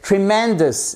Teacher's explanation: vous avez l'accent tonique sur la deuxième syllabe